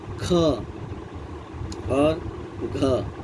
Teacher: ये महाप्राण है, इसमें हकार की ध्वनि आती है।